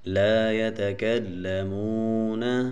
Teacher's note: یہ واو ساکن ہے، اس سے پہلے پیش ہے تو یہ واو مدہ ہے، اس کو ہم تھوڑا سا کھینچیں گے